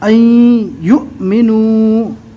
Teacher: پہلے والے حرف سے ملا کر جھٹکا دے کر پڑھیں گے